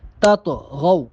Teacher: طا پہ قلقلہ کریں گے کیونکہ طا ساکن ہے